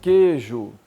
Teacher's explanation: O U não sai e o I não sai.